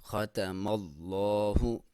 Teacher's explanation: خا کو موٹا پڑھیں گے، ختم اللہ، اللہ کے لام سے پہلے زبر ہے، موٹا پڑھیں گے